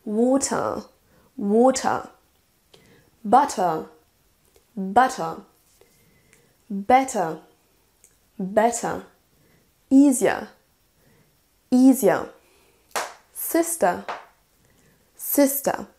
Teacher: on n'entend pas le R comme en anglais plutôt américain, mais on va terminer par un son schwa avec un léger, même pas un R, on va traîner un petit peu sur la syllabe.